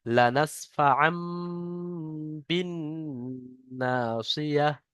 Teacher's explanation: এই বা আসার কারণে এই তানমিনের নুনটা বাদ গিয়ে মিম পড়তে হবে, সেজন্য ছোট্ট করে মিম দিয়ে দিয়েছে, এটাকে ইকলা বলা হয়।